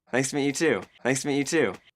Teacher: really stressed the word to.